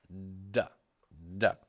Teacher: a dental stop duh he tried to pronounce a D sound all the airflow stops and then it's released